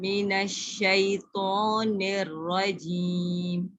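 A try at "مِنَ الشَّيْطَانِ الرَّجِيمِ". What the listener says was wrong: अच्छा, निर्रजीम का नून के ज़ेर नेर हो रहा है, इसको भी बात। नून ज़ेर क्या होती है, ने या नून ज़ेर नी?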